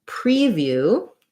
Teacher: preview has first syllable stress and it's going to be the e sound